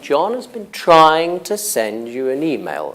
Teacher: And again, you would get a stress on trying.